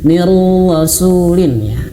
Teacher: Kalau nun mati bertemu huruf ro, ingat jangan sampai didengungkan.